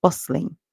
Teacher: uh then we hear s and t together bus the S the t is actually silent in the word